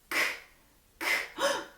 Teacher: It's just our breath. It's not voiced.